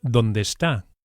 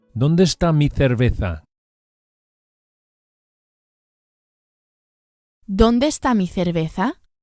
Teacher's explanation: Don't separate the two words donde and esta. Donde and esta must stick together.